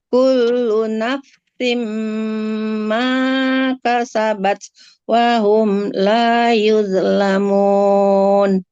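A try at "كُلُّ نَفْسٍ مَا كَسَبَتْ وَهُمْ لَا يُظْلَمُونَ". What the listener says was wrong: Oke, alhamdulillah. Barakallah Ibu ya.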